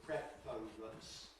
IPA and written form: ˈprefərəns (preference)